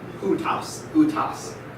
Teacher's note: Remember, we don't pronounce that au. It's u. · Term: diphthongs